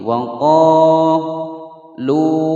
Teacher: Wa qalu panjang dua ketukan, wawu sukun sebelumnya dhammah. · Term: mad tabi'i